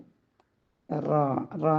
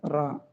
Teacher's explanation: നാവിൻറെ തുമ്പും മേലെ മുൻപല്ലിന്റെ ഊനിന് തൊട്ടുമുകളിൽ